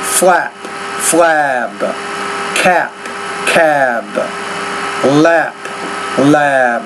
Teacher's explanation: when the voice consonant is at the end of the word in many cases the vowel which precedes it is longer